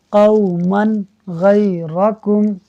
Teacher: غین حروف ہلکی میں سے ہے، لہٰذا اظہار ہوگا، یعنی تنوین میں غنہ نہیں ہوگا